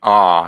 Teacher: When you say an ah, you kind of open your jaw. A lot of air passes through it, and your vocal folds vibrate. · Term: vowels